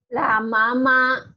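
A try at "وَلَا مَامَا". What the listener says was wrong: La mama wanya ketinggalan, Bu.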